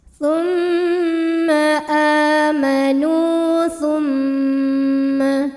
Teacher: Cara bacanya dengung, bunyi M tahan sampai ada suara masuk hidung. Kurang lebih 2 harokat. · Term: gunnah musyaddadah